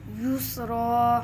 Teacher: وقف میں دو زبر کو الف سے بدل دیتے ہیں